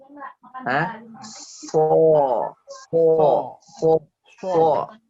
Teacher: sod adalah huruf lisan, bukan huruf bibir. Huruf bibir cukup ada 4, huruf sod itu di lisan, ya, di lidah.